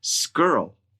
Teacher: what I've heard you say which is what you got to at the end of those three repetitions you said scrl that's what I heard with no W Glide · you said skirl. That's what I heard, with no wa, glide.